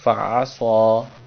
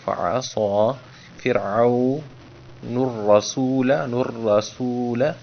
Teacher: صاد کو پر کر کے پڑھا ہے تاکہ سین صاد اور ثا میں تمیز ہو